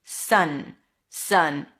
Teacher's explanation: Make sure you lift the tip of the tongue to touch the upper pallet for the n.